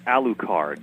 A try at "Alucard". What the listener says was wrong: there's no you in there